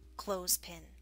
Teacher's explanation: the word clothespin also skips the th sound